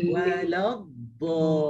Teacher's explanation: wala terus lidah lekat pada geraham atas, baru lepaskan dha.